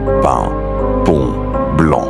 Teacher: on a les voyelles nasales comme en, on, in, par exemple dans pain, pont, blanc.